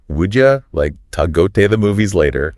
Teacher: would you becomes would ya, to is like ta, and the like disappears before movies